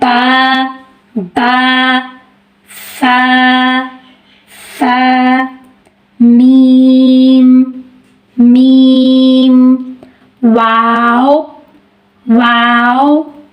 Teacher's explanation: शफतान दोनों होंठों को कहा जाता है और ये 4 हरूफ की अदायगी होंठों से होती है। होंठों के बगैर इनकी अदायगी मुमकिन नहीं है।